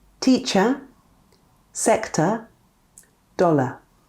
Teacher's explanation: When the vowels E, O and A are followed by an R, we will often, but not always, use a schwa.